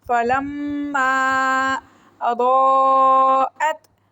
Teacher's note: ضاد کو موٹا پڑھیں گے اور اس کے اوپر مد ہے، 5 فنگرز کھینچ کے پڑھیں گے. حمزہ کو گلے کے آخری حصے سینے والی سائڈ سے پڑھیں گے.